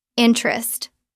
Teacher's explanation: Natural pronunciation interest. Drop the first e. Interest two syllables.